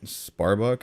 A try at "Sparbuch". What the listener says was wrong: It's almost like crypto Sparbuch, where like it's like BUH almost. Like people say Sparbuck and stuff, but I'm pretty sure it's pronounced like crypto Sparbuch.